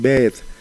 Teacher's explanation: Por ejemplo, sabemos que Pedro fue de los primeros nombres en adaptarse porque en zapoteco de San Pablo Huilá es Bed, es decir, lleva la oclusiva lenis y no la fortis